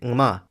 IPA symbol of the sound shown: ŋm